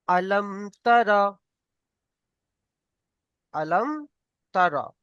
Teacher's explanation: আলম তারা গুণনা হবে না, কারণ মিম সাকিনের পরে তা এসেছে। মিম সাকিনের পরে তা এসেছে, এটা হচ্ছে ইজহারে শাফাবি।